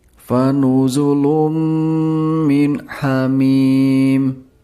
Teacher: ada pertemuan dammah tanwin dengan huruf mim. Ini adalah bacaan idgham bighunnah. Jadi, harus dibaca dengan bunyi sengau.